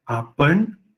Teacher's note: com o consoante retroflexa, nasal retroflexa